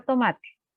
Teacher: tomate, ¿dónde suena más fuerte? La palabra tomate. En la ma. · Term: acento prosódico